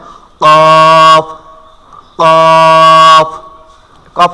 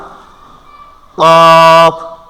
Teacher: উচ্চারণ হবে আমাদের জিহ্বার একেবারে গোড়া জিহ্বার গোড়া গোড়াটা যেখানে থাকে ঠিক ওখান থেকে উপরে উঠাইয়া